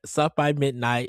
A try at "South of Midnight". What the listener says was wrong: South of midnight, Ed. You said South by Midnight.